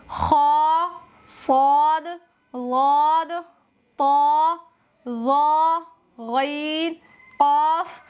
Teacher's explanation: ان کو ادا کرتے وقت زبان کی جڑ اوپر کے تالو کی طرف اٹھ جائے اور منہ کے اندر ہوا بھر جائے، جس سے یہ حروف پر ہو جائیں۔ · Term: استعلاء